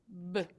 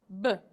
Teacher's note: We call B a lip-popping sound because when we say it, we keep our mouth closed and our lips together until they pop open with a burst of air as the sound is made.